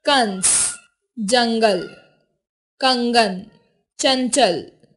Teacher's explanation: इनका स्थान स्वर के बाद और व्यंजन से पहले होता है। अंग इसे अनुस्वार कहते हैं। इसका उच्चारण नाक से होता है। अंग का चिन्ह यह होता है, जैसे कंस, जंगल, कंगन, चंचल आदि।